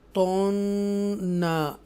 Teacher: ये नून मुशद्दा है, तो हम यहाँ गुन्ना करेंगे, इक्फा भी करेंगे।